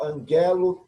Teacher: No caso de dois gamas, vamos ter um som de N no primeiro gama.